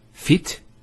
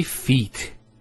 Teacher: There's an elongation of the E sound.